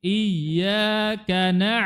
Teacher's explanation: ainnya diperjelas di tenggorokan bagian tengah